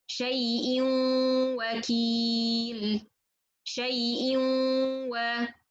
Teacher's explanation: So when I go for the واو or when I go for the ياء, no more غنة. Okay, so الغنة it's in between only.